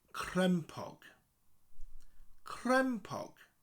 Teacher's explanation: Crem with a rolling R, crem and pog.